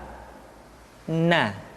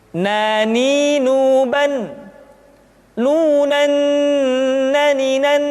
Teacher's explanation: menyentuhkan ujung lidah kita di antara posisi ro dengan la. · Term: huruf na